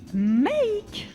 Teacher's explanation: cette voyelle se prononce A-I, make. Ah oui, une diphtongue.